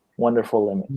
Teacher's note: you have to say the L because you have to like attach the L to the next sound and say it